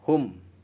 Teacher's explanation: Idhar itu artinya jelas, safawi itu huruf yang keluar dari safawi itu ya huruf yang keluar dari 2 bibir. Huruf mimnya itu dibaca jelas, hum, jangan hum, jangan, tapi dijelaskan huruf mimnya. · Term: idhar safawi